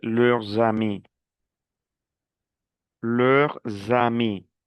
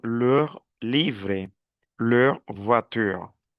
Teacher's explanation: Cambia cuando comienza por vocal. Por ejemplo, quand on dit leurs amis. Y aquí suena la S. Leurs amis.